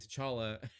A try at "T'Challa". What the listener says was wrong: full name is Chala. The T is silent, but you can call me Chala.